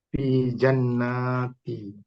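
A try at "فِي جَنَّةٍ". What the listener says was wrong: Jannati atau jannatin? tanwin apa nggak ini kira-kira? Jannatin. Bisa menjadi jannati kalau di belakangnya ada kata lagi ya. Tapi kalau di sini fi jannati an-na'im misalkan.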